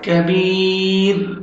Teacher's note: کبی اور را ساکن، را سے پہلے سکون اور جو لیٹر ہے وہ ساکن ہے، اس سے پہلے زیر ہے، تو آپ نے را کو باریک پڑھنا ہے